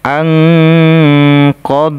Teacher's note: Jaiz munfasil panjangnya 4 sampai 5 harakat allzi [Tepuk tangan] kemudian nun sukun ketemu huruf q dibaca ikhfa cara membaca ikhfa didengungkan dan disamarkan